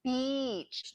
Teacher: a similar sound to long e exists in most languages the difference is ours is longer